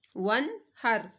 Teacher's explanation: یہاں پہ آپ نے غنہ نہیں کرنا، نون ساکن کے بعد حروف ہلکی میں سے ہا آ رہا ہے تو اس وجہ سے یہاں پر غنہ نہیں کیا جائے گا، یہاں پر اظہار ہوگا، بغیر غنہ کیے پڑھا جائے گا۔